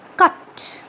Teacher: So the vowel sound A in the word cut has just one sound. It's a monophthong. Mono means one. · It's a monophthong. The tongue remains stationary.